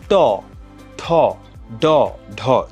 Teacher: ট বর্গীয় ধ্বনি এগুলো উচ্চারণ করার সময় যেটা হয় সেটা হচ্ছে জিওভার যে আগাটা থাকে সেটা কিঞ্চিত উল্টে যায় উল্টে উপরের মাড়ির যেই গোড়ার শক্ত অংশটা আছে সেটাকে হচ্ছে স্পর্শ করে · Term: মূর্ধন্য ধ্বনি